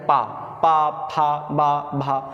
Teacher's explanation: जब इनका उच्चारण करेंगे तो हमारे ओंठ जो हैं वो एक में चिपक जाते हैं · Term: ओष्ठ